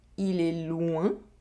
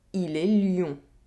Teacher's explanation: Here, we have a difference in nasal sound with a semi-vowel sound. We have the [wε̃] sound in the first sentence, and the [jɔ̃] sound in the second sentence.